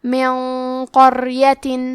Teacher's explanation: کلمت من کے آخری میں نون ساکن ہے، پھر حرف القاف ہے کلمت قریہ، یہاں حکم ہے اخفاء، تو ہم یہ حکم کو غنہ اور تفخیم کے ساتھ ادا کریں گے